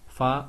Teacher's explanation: फा ओष्ठीय है, महाप्राण है और अघोष है।